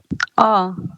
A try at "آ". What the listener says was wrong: آ. جلدی پڑھیں گے، آ کھینچیں گے نہیں.